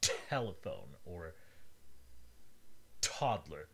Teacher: absolute complete blockages, as in the T in telephone or toddler, where the air stops completely and then is released in a small explosion.